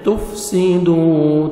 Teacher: تا کو باریک پڑھیں گے، واو مدہ دال کو 1 سیکنڈ کھینچیں گے